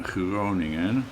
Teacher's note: We actually have two G sounds. One that is voiced, as in Groningen